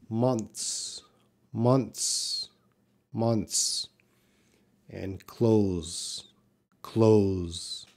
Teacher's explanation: This TH sound is very reduced. It's there, but it's very reduced. It's very slight.